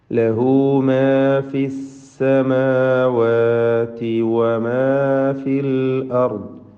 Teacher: വാവിൻ്റെ ഉച്ചാരണം വ്യക്തമായി 2 ചുണ്ടുകളിൽ നിന്ന് തന്നെ വരണം. അത് താഴെ ചുണ്ട് മേലെ പല്ലും ചേർത്തുകൊണ്ട് വ എന്നായി പോകരുത്. · ലഹു എന്നതിലെ ഹൗ ദമീർ, സില എന്ന് പേര് പറയുന്ന ഹൗ ദമീർ, അതിന് മദ്ദുസ്സില സുഗ്റ നൽകി 2 ഹറക്കത്തിൻ്റെ അളവിൽ മാത്രം ദീർഘം നൽകേണ്ടതാണ്